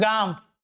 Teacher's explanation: जैसे मैं बोलता हूं गांव। इसके ऊपर यह जो नाक से निकलती हुई ध्वनि का उच्चारण हम कर रहे हैं वही अनुनासिक है।